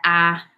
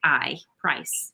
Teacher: So words like, and I'll do it with the target accent, the target sound, but like price, that ah sound, whereas many other regional accents would be something like I